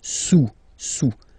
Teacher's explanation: Don't pronounce the final S, and then this OU combination of vowels is pronounced OU, okay?